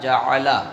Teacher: زبان کا کنارہ مسوڑوں سے لگا کر ہم لام ادا کرتے ہیں